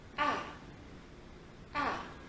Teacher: A au quatrième ton, c'est descendant.